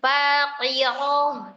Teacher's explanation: menebalkan huruf ra tetapi tidak memanjangkan harokatnya, tetap dibaca pendek